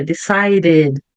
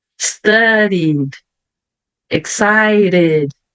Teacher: o d também muitas vezes vai ficar com o som de R